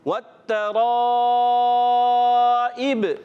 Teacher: را کو پر رکھنا ہے، اور یہ مد ہے، مد متصل. 2 ڈھائی الف یعنی 4-5 حرکات کھینچ کر ادا کریں گے